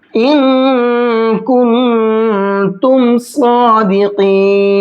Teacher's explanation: सादिकीन के अंदर साद और काफ दोनों को मोटा करके पढ़ेंगे।